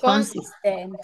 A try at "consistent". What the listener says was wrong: Pronúncieme la T al final, vea. Consistent. Consistent. Consistent.